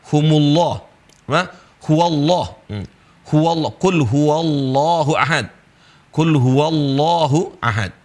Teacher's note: Lafzul jalalah yang sebelumnya fathah sama dhammah maka dibaca tafkhim Allah ya. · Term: tafkhim lam Allah